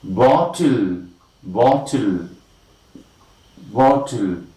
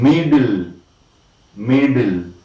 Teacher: T and D are immediately followed by the lateral L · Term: lateral plosion